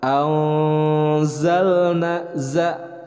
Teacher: nun sukun bertemu dengan za, hukum bacaannya ikhfa. Cara pembacaannya adalah didengungkan kemudian ditahan 2 harakat.